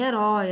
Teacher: a sílaba tônica é o roi e é um ditongo esse o é uma vogal e esse i é uma semivogal